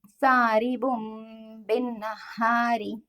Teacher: نون کی آواز کو میم میں بدلیں گے اور اس کو با حرف میں چھپاتے ہوئے پڑھیں گے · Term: اقلاب